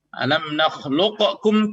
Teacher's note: ketika nakis otomatis namanya idgham, maka tidak ada sifat qalqalah